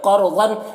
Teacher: قاف کو پر پڑھیں گے، را کو بھی پر پڑھیں گے، اور ظن، ضاد کو بھی پر پڑھیں گے، اور تنوین میں اظہار حقیقی ہو رہا ہے، سے جلد پڑھنا ہے۔